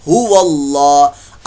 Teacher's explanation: अल्लाह का नाम यहां पर मोटा होगा